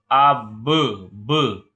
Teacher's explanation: با کی آواز دوبارہ لوٹتی ہوئی آئے گی جب ادا کریں گے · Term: قلقلہ کی آواز